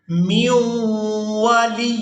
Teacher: میم کو واو مشدد کے ساتھ ملائیں گے اور غنہ کے ساتھ ادا کریں گے